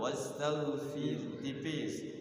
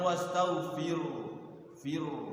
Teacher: Jangan tebalkan tapi tipiskan rnya di tipiskan di nyengir ya.